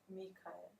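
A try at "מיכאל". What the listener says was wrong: That's mikil. It's aleph between the kaf and the lamed. Yud, kaf. Miha. There's no ka. No, ch.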